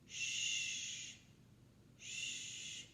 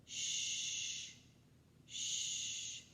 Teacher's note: They're nice and round. And my tongue is behind my teeth, but pushed back just a little bit. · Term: sh sound